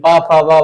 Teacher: बिना ओठ के टच किए पा फ बा तुम बोल ही नहीं पाओगे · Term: ओष वर्ण